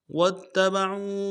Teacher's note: تشدید زور دیں گے، اور عین کو واو کے ساتھ ملانا، عین کو موٹا کرتے واو کے ساتھ ملائیں گے · واو کو تا کے ساتھ ملانا ہے، تا کے اوپر تشدید زور دیں گے